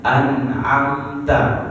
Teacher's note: Nah, di situ mim bertemu dengan ta. Jadi tidak perlu ditahan, tidak perlu didengungkan. Jadi jelas, ya. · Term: izhar syafawi